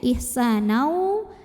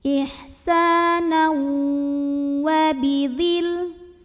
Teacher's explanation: Kalau terus atau wasol hukumnya adalah idgham bi gunnah karena tanwin fathah bertemu waw. Cara bacanya tanwinnya masuk ke waw ya, ihsanau, dan dengungkan, tahan.